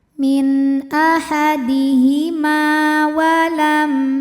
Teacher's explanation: karena ada alif didahului baris fathah maka huruf mim panjang dua harakat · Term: mad thobi'i zohiri